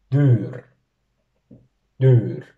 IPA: 'dyːr